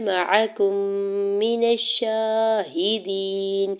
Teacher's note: काफ के पेश को मीम मुशद्दद के साथ मिलाते हुए इदगाम शफ़ी का रूल अप्लाई हो रहा है। मीम मुशद्दद पे गुना करेंगे · नून के ज़बर को शीन मुशद्दद के साथ मिलाते हुए शीन के ऊपर खड़ी ज़बर है 2 हरकत खींच के अदा करेंगे